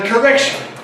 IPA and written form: kəˈrekʃn̩ (correction)